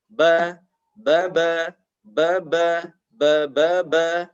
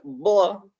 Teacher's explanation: Dua sifat ini, istifal dan infitah, efeknya kalau kita bunyikan ini tipis dan lidah kita rileks saja.